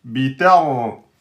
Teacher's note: ra sukun précédé de fatha, du coup ra emphatique